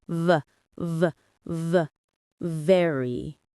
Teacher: For VV, bite your lower lip gently and make your voice vibrate. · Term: VV sound